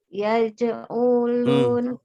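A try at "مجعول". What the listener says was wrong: Ada mimnya. Isim maf'ul. Isim maf'ul.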